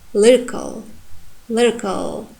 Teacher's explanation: You see the a sound becomes schwa